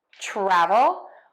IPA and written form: ˈtrævəl (travel)